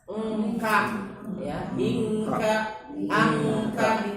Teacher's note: Nah, kalau ikhfa ab'ad pasti konsonannya itu ang bunyinya. · menyebutkan huruf nun pada makhraj huruf setelahnya